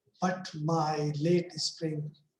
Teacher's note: These are unstressed, stress, unstressed, stress. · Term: iambic